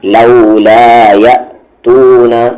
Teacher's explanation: یا کو حمزہ میں جھٹکے کے ساتھ